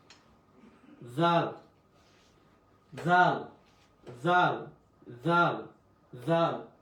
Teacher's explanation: জাল জিবটা আগা থেকে আসবে